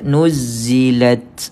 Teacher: bunyi angin yang keluar daripada huruf ta